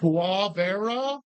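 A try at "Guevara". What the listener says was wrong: Never pronounced with the G. Che Rivera. And they say Che Rivera.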